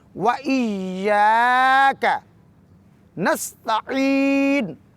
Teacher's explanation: عین کو وسط حلق سے ادا کرتے ہوئے یا مدہ کو 2 حرکات سے زیادہ کھینچیں گے۔